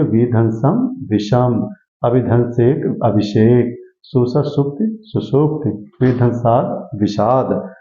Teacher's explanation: स से पहले आया आ को छोड़कर, स से पहले आया आ को छोड़कर कोई भी स्वर आता है तो स का क्या बन जाता है, दंत स का मूर्धा स बन जाता है